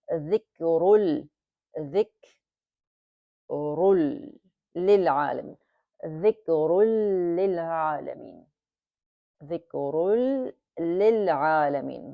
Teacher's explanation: So the ra with the tanween gets merged with the lam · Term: idgham kamil bidun